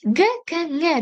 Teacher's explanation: E'tibor bersangiz, orqaroqdan chiqyapti bu 3 ta tovush. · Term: til orqa undoshi